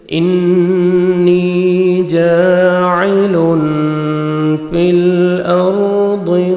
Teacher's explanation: تنوین کے بعد 15 لیٹرز میں سے فا ہے، یہاں پہ آپ نے اخفا کرنا ہے، نوز میں ساؤنڈ لے کے جائیں گے۔